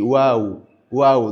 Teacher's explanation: Elle se distingue des ou de la langue française mais elle on la prononce ainsi waou wau. Donc elle a pour lieu d'articulation notamment au niveau au niveau des lèvres